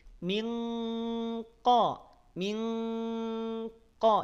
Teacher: saat bertemu dengan huruf qf maka pangkal lidah kita siap untuk dinaikin ke langit-langit